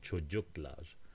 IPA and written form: tʃodʒuklar (çocuklar)